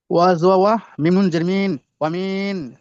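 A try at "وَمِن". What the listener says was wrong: মিম নুন জের মিন বলে টান হয়ে যাচ্ছে, গুণ টান হবে না, মিম নুন জের মিন গুন্না হবে। ওয়ামিন,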